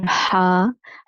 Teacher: ہا گلے سے نکلتا ہے وسط حلق سے